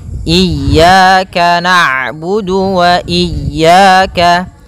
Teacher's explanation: ain itu punya sifat namanya bainiyah, yaitu bacaan di antara syiddah dan rokhawah. Kalau syiddah suaranya tertahan, kalau rokhawah suaranya mengalir, maka di antara keduanya.